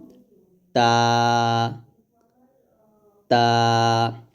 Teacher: তা এবং ত দুটো মাখরাজ এক, তবে তা পাতলা ত মোটা। মাখরাজ হলো জিহ্বাটা উপরে দুই দাঁতের গোড়ার সঙ্গে লাগবে। তাটা পাতলা করে বলতে হবে এরকম তা তা, আর ত মোটা করে বলতে হবে ত ত ত, এরকম।